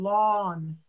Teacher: Lawn isn't really as much of a diphthong. It's more of a simple sound.